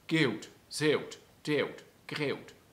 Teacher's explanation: Das waren 3 Laute in einem. Das nennen wir einen Triphthong.